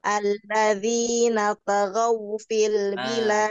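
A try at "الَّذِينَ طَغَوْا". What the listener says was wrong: Jangan alladzina Ingat tadi huruf to sifatnya apa? Tebal. Alladzina taghaw fil bilad. Nanti ya dilatih ya untuk huruf-huruf tebalnya.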